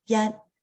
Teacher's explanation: we're going to start with the first tone it's the very high tone